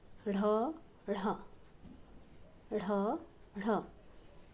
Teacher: जीवा के ऊपर की ओर झटके में जाने के कारण इन ध्वनियों को उत्क्षिप्त कहते हैं।